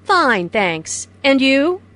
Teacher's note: notice the rising intonation on and you this shows that is interested in what jane has to say